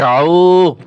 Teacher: আইন গলার ভিতরে চাপিয়ে বলতে হবে এবং একালি টান হবে এখানে